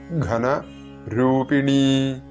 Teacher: ഘ തൊണ്ട ചേർത്ത് ഉച്ചരിക്കേണ്ട അക്ഷരമാണ്, മഹാപ്രാണൻ